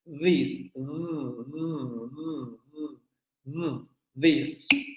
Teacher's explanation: la lengua se echa hacia la zona de los dientes superiores, ¿no? Tocando la zona inferior de los dientes superiores.